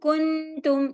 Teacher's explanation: आगे के मखर के साथ नाक में छुपाकर गुन्ना के साथ पढ़ा जाता है